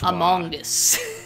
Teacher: you're pronouncing the g really hard and uh you're pronouncing the o as like an o sound instead of a schwa